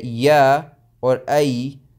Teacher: when you say ya or ay, then you're using the center of your tongue, but the portion that is the farthest away from your mouth and the one that is the closest from your throat.